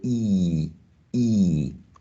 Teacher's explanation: the tongue is way up right um almost touching the alveolar bridge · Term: high vowel sound